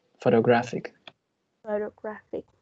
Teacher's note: we have a secondary stress in the first syllable, but the primary stress is in the third syllable